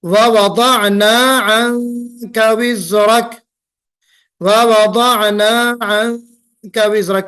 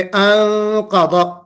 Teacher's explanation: काफ। नून के बाद काफ आ रहा है जी, तो यहाँ पे इख्फा होगा।